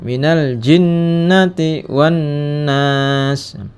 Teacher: Al jinnah ini nih dibaca al-qamariyah karena al bertemu dengan ja, huruf qamariyah. Jinnati, ya, ini gunnah karena nun bertasid, dibaca panjang 2 harokat.